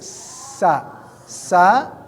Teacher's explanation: sa itu adalah ujung lidah ya ujung lidah bertemu dengan gigi seri ya ke bawah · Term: huruf sa